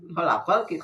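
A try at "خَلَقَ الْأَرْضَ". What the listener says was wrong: Khalaqal ardo. Khalaqalna tadi panjang karena pendek.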